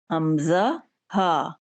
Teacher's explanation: तो ये 6 हरूफ जो हैं हमज़ा, हा, इब्तदाई हलक से निकलने वाले हैं। इब्तदाई हलक यानी सीने के बाद जहाँ हलक शुरू हो रहा है वहां से इनकी आवाज निकलती है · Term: हरूफ़े हलक़ी